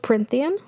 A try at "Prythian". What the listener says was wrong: Prythian. There's no N. Prythian.